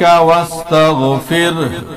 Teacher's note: را ساکن اس سے پہلے زیر، را باریک ہوگی